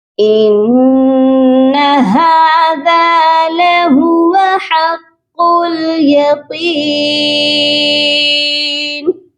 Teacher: ہا کو بھی ایک الف کی مقدار لمبا کریں گے، اور ذال کے ساتھ الف ہے، اس کو بھی ایک الف کے برابر لمبا کریں گے · قاف کو لام کے ساتھ ملائیں گے